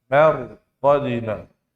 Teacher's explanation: Ro sukun. Sebelumnya apa? Fathah. Maka wajib dibaca apa? Dibaca tebal.